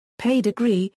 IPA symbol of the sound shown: pʰ